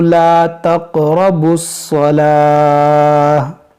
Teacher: یہاں قاف میں قلقلہ ہوگا کیونکہ قاف ساکن ہے